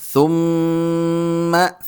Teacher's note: دی یا ری کم، ثم سا اسی طرح زبان کی نوک نکال کر، اور میم پر چونکہ تشدید ہے تو اس پر ناک میں آواز پیدا کریں گے، غنہ کریں گے